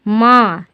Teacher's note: तो ये भी एक्चुअली, ये भी दरअसल नून ही है, ठीक है, लेकिन इसमें नून में नुक्ता नहीं है, तो इस नून की आवाज़ नाक से आएगी थोड़ा सा